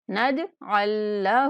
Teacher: جیم پر قلقلہ کریں گے اور عین کو مشدد لام کے ساتھ ملا دیں گے